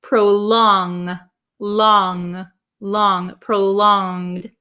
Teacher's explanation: So in the word prolonged, we don't say it as a hard G.